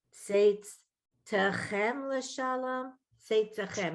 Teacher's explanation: The tav is going to have that shava, and it's a syllable by itself. So we're going to hear it. And then the chem at the end.